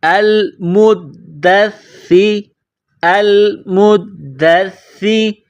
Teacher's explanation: دیکھیں، حمزہ لام زبر ال، حمزہ لام زبر ال، میم دال پیش مد، دال ثا زبر دس، ثا زیر سی، میم دال پیش مد، دال ثا زبر دس، ثا زیر سی، المدثی۔ دال کو دبا کر پڑھیں گے، سا کو دبا کر پڑھیں گے تشدید کی وجہ سے